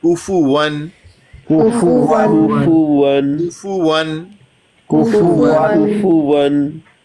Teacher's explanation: वाव की अदायगी के वक्त होंठों को गोल करते हैं